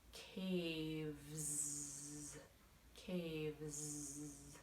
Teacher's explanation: We need our voice. So the S after the V sounds like Z